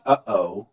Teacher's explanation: that pause that you hear that's your glottis closing the airway to prevent air from coming through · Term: glottal stop